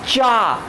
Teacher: जबान को तालू से टच करते हैं तो क्या होता है, चा का साउंड निकलता है। क्या है, चा का साउंड रिलीज करता है।